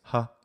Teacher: how does h sound in latin it's ha as in english that's the voiceless glottal fricative in the ipa symbol that's this is as in english and